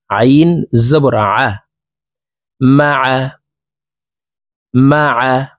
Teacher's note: আইন হরফ হলকের মধ্যখান থেকে চাপ দিয়ে উচ্চারণ করব, কারণ আইনের মখরাজ হলকের মধ্যখান থেকে হবে।